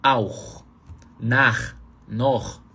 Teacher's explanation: Então, aí você pode chamar isso de CH rasgado. Nesse CH rasgado é quando o CH está depois de A, O e U.